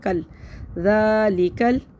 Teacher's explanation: لام کو جلدی پڑھیں گے، کاف کو لام سے فوراً ملا دیں گے